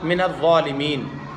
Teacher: فتکونا من الظالمین میں ضا پر پڑھا جائے گا چونکہ حروف مستعلیہ میں سے ہے اور یا ساکن کے بعد نون ساکن ہو رہا ہے. یا ساکن حروف مدہ ہے حروف مدہ کے بعد نون ساکن ہو رہا ہے آیت کی وجہ سے تو مد لازم وقفی ہوگا